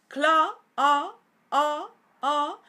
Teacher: inglés americano es closet closet cla a a o recordad que este sonido a es una mezcla de o y a